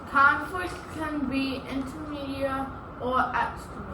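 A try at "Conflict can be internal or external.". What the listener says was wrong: You got the first part, inter and exter. The N, just in case you can't see it, it's an N-A-L, so it's internal. Internal or external.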